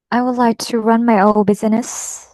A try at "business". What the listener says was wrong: Không phải busy đâu, là business.